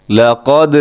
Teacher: دال پہ قلقلہ کرنا، یعنی دال کے ساؤنڈ اپنے ڈبل کرنا ہے۔ لقد، اسے ایسے پڑھنا غلط ہے، لقد آواز کو روکنا نہیں ہے بلکہ آپ نے آگے جانے دینا ہے۔